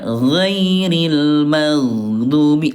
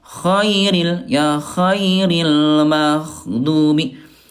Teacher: Nah bunda bedanya kalau ghain dia jahar ayah bunda ya, tidak ada udara ya, sementara kalau kho ayah bunda dia hams ada udara.